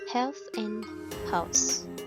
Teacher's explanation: And the next one is glottal. The sounds is produced without any movement of the tongue or other parts of the mouth. The sound is produced in the glottis, which is the space between the vocal cord and the larynx.